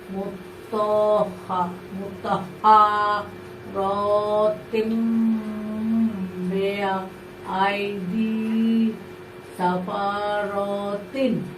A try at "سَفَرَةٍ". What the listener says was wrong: মাশাআল্লাহ মাশাআল্লাহ সুন্দর।